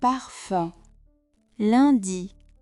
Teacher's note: This one sits close to IN, but the lips round more. Keep the sound tight, then push the lips slightly forward.